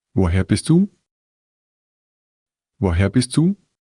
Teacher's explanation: listen for the rising intonation at the end, it's a key indication that it's a question